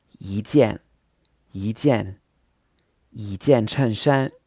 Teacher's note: so we've got what becomes a second tone, a fourth tone, then another fourth tone, then another first tone.